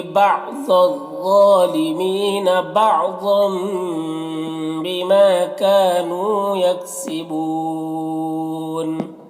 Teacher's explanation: تنوین کے بعد با ہے تو تنوین کو میم سے بدل کر پڑھیں گے، اس کو غنہ اخفا کے ساتھ پڑھیں گے، اس کو اقلاب کہتے ہیں۔